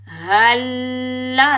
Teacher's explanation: हल्ला, इस हा को हम सीने की तरफ वाले हलक से अदा करेंगे। हल्ला, लाम मुशद्दिद को भी हम सख्ती से अदा करेंगे।